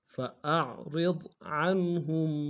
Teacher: را کو باریک ادا کرتے ہیں، ضاد کے سامنے لائیں گے، ضاد کو موٹا ادا کریں گے